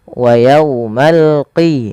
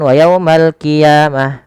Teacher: Dia adalah huruf qaf ya, lebih tebal hurufnya dan dia sifatnya sifat isti'la, pangkal lidahnya terangkat. Wa yaumal qiyamati yuradduna, panjang ya dan du harus sama, 2 harakat karena ia mat tabi'i.